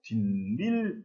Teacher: 분명히 뒤라고 하는 말과 일이라고 하는 말 사이에는 아무것도 없었는데 분명히 발음할 때 뒷일 이렇게 니은 소리 두 개가 덧납니다. 이러면은 사이소리 현상이 일어난 것입니다.